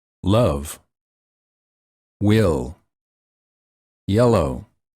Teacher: the air comes out on the sides of the tongue and at the corners of the mouth